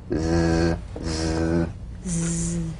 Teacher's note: The Z cognate S, a voiced S sound fricative. The tongue rim should gently touch the upper gum ridge. · The Z vibrates in that very small open space between the tongue and the upper teeth. Right in here.